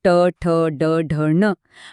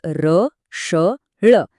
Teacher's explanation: आणि सोबत र श ळ हे सगळे मूर्धन्य आहेत का कारण यांचा उच्चार करताना आपली जीभ दुमडून टाळूवर जाऊन टेकते